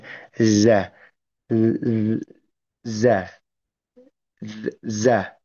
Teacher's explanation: Pengucapan huruf zai ini ialah menempelkan ujung lidah ke bagian gigi seri bawah belakang